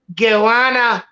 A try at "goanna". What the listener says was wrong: I think you're saying goanna, yeah? You're sounding more like marijuana. I would say goanna. gets mixed up a bit in there.